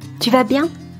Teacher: it is pronounced at a higher pitch for questions